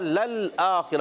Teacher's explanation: خا حلق کے اوپر والے حصے سے ادا ہوتا ہے، خا کے نیچے زیر ہے اور را پر زبر ہے اس لیے را کو پر پڑھیں گے، خا کو ہی پر پڑھیں گے۔